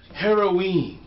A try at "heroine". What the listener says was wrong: Heroine? Like Are you just heroine? Why are you extending the pronunciation of heroine?